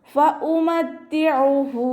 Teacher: ഫഉമത്തിഉഹു, ഫ ലൈറ്റ് ആക്കിയിട്ട് ഉച്ചരിക്കുക. മഖ്റജ് വരുന്നത് നമ്മുടെ മേലെ മുൻപല്ലിൻ്റെ അറ്റവും താഴെ ചുണ്ടിൻ്റെ ഉൾവശത്ത് നനഞ്ഞ ഭാഗവും ചേർന്നിട്ടാണ്